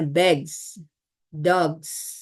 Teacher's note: Contohnya kayak gini nih. Bunyi geh itu kan dia voice ya. Kalau ditambahkan jamak as, dia bunyinya jadi z gitu. Jadinya misalnya bags, dogs.